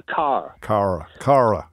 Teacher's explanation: most varieties of British English lost the r in words like car